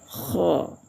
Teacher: kalau hukumnya tebal, tafkhim, cara bacanya kho, antara huruf o dengan huruf a